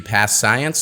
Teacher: we only pronounce the consonant sound once as the ending of the first word and the beginning of the second word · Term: consonant to consonant linking